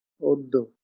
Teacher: এই জ ফলার প্রভাবে আদ্য অটি ওকারের মতো উচ্চারিত হবে